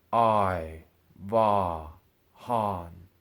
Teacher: those middle tones are said flat and steady but the fourth tone falls with each word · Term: 4th tone